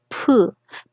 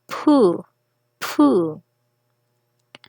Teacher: ang P plus breath sound H plus the vowel U